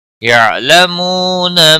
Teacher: یعلمون عین ساکن کو ہلانا نہیں. منہ واو مدہ ہے، 1 الف کے برابر کھینچ کر پڑھیں گے